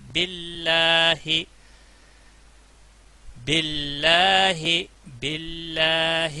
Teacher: جلالہ کا نام آیا ہے تو پچھلے حرف کے نیچے زیر ہے تو باریک پڑھا جائے گا